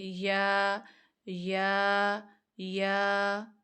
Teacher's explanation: अलिफ है ना आगे तो एक अलफ जितना लंबा करेंगे